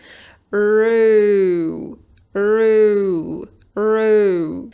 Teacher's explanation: What you might notice as well is that I also move my lips. They're a little bit more open at the beginning when I'm pronouncing the /r/ sound and they close at the end of /u:/. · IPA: /ru:/